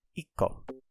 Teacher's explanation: When we have a su here character that's little, you don't actually pronounce the tsu. You kind of make it a hard stop. So it makes the following like consonant character kind of sharper.